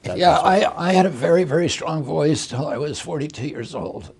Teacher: you have an unusual condition in terms of the way it makes your voice sound, known as spasmodic dysphonia